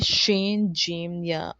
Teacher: مخرج نمبر 7 ہے حروف شجریہ، شین، جیم، یا۔ زبان کا درمیانی حصہ اور اس کے مقابل اوپر کا تالو